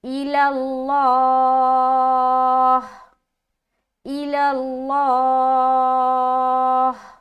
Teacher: तो खड़ा ज़बर जो है तो इसको लंबा भी करना है और लंबा करके स्टॉप होना है। और स्टॉप होते हुए हा की आवाज निकलनी चाहिए। सामने वाले को सुनने वाले को समझ में आना चाहिए कि आप हा पर स्टॉप हो रहे हैं।